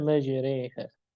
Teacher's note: Majraha untuk Hafs dibaca majriha. Majri, re jadi miring dia. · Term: imalah